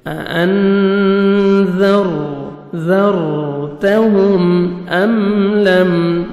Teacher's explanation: را ساکن سے پہلے زبر ہے، را کو پر کریں گے، تا کو باریک پڑھنا ہے